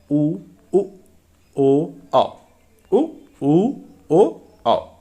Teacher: गोल हो जाएंगे, यही इनकी पहचान है। तो वृत्तमुखी स्वर होते हैं जिनके उच्चारण में होठ गोलाकार हो जाते हैं